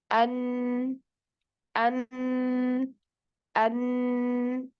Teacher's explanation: huruf nun ini makhrojnya merupakan ee perpaduan dari lidah dan pangkal hidung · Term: gunah